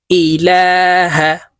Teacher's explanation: লামের উপরে খাড়া জবর আছে তাই এই লামকে এক আলিফ টেনে পড়তে হবে